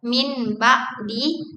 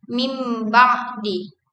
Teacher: Mim adalah nasal bilabial yang berarti artikulasinya terjadi di kedua bibir, sama seperti ba, sehingga proses ini memudahkan transisi antara nun dan ba dengan mengganti bunyi nun menjadi mim. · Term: iklab